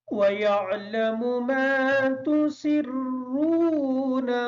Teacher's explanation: وَيَعْلَمُ کی جو عین ہے اس کو کلیئر کریں گے۔ ما تُسِرُّونَ کا جو را ہے اس را کے اوپر پیش ہونے کی وجہ سے اس را کو پر پڑھیں گے